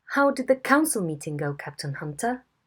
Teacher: we have an early nucleus and a very very long tail